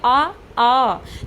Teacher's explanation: अब जो छोटा आ और बड़ा आ को जब आप बोल रहे हैं बोलिए आ। जब आप बोल रहे हैं आपको फील होगा कि आपके कंठ से डायरेक्ट आवाज आ रही है।